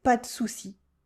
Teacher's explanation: In fast spoken French, we cut the E in small words, like in de.